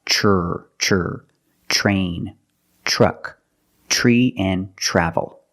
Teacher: Use the ch plus the R, the voiced R sound.